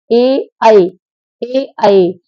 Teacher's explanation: जब आप ए और आई बोलेंगे तो कंठ से आवाज निकलेगी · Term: कंठ तालव्य